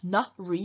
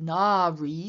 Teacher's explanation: so we have a long a in the first syllable